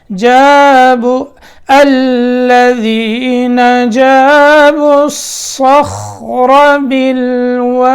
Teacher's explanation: صاد موٹا ہے, یہ خیال رکھنا